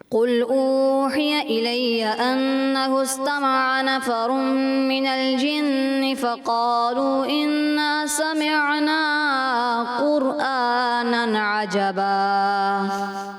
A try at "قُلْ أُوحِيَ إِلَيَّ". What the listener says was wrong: مد اصلی تھوڑی زیادہ ہو گئی، قل اوحیا، قل اوحیا، تو 10 میں سے 9 نمبرز۔